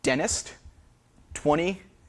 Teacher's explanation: There's no T in the secondary position in 20. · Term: T glottalization